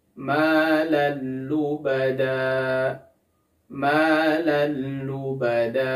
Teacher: lubada maal lubada di sini ada fathatain bertemu dengan huruf lam maka kita cukup memasukkan tanwinnya ke huruf lamnya saja tidak boleh disertai dengan gunah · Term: idgham Bil ghunah